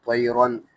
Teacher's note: را کے اوپر چونکہ تنوین آئیں گی 2 زبر کی تو را یہاں موٹا ہوگا